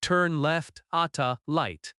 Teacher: If someone says, "turn left at the light," they mean at the traffic light. Notice how at the often reduces to ata.